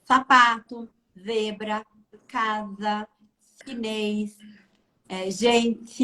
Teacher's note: É a interposição da língua nos fonemas S e Z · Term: ceceio